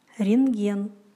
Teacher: Н-т-г произносится как НГ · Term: непроизносимый согласный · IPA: [rengen]